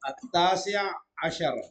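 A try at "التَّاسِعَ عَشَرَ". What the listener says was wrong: At-tasi'a asyara. Itu ainnya kasih 2 ya. At-tasi'a asyara. Bukan at-tasi' asyara. At-tasi'a asyara.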